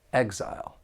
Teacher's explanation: this noun has two syllables and the stress is on that first syllable